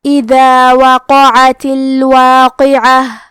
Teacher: قاف حروف التفخیم میں سے ہے تو ہم یہ حرف کو موٹی آواز میں پڑھیں گے کیونکہ واو پہ، قاف پہ اور عین پہ تینوں پہ زبر ہے تو ہم یہ تینوں زبر کو ظاہر کریں گے اور حرف العین کو حلق کے درمیان والے حصے سے پڑھیں گے. آخر میں تا کے نیچے زیر ہے تو ہمیں زیر کو ظاہر کرنا ہے.